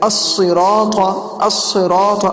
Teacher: اب دیکھیے اہدنا تک تو سمجھ میں آ گیا، لیکن اب بات کرتے ہیں آگے کہ الصراط، تو صراط کے اندر صاد بھی پر حرف ہے، را بھی پر حرف ہے، اور تو بھی پر حرف ہے